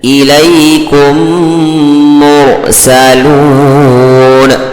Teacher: اب میم ساکن کے بعد میم آئے تو میم کو میم سے ملا کر کے غنہ کے ساتھ پڑھنا چاہیے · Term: ادغام شفوی